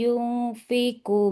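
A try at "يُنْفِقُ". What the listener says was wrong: Kalladzi yunfiqu. Nah, kofnya hati-hati jangan mengalirkan nafas. Tidak yunfiku. Yunfiqu.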